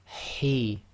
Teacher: Now the He is the heavy ha, which comes from the throat. So you have to exhale a bit more forcefully.